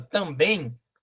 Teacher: uma palavra oxítona porque a sílaba tônica está na última sílaba a tonicidade a pronúncia mais forte está na última sílaba